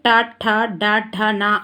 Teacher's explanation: ట ఠ డ ట న అనేటి ఉత్పత్తి స్థానము మూర్తన్యాలట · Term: మూర్ధన్యాలు